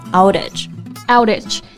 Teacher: 中间呢，它是发短元音▁A▁的音，口腔非常的放松